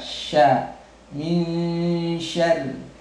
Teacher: Lalu huruf shinnya ya, ini makhrajnya kurang sedikit tepat ya, mungkin makhrajnya sedikit saja mundur ke belakang ya, berada posisi di tengah-tengah lidah dengan berhadapan pada langit-langit atas.